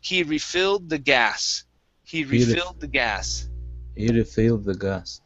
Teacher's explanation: The verb has the stress on fill.